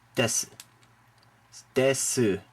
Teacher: when you see SU together, it's pronounced quickly. Sometimes it just sounds like S